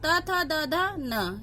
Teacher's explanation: त थ द ध न ये हम दंत की सहायता से बोलते हैं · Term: त वर्ग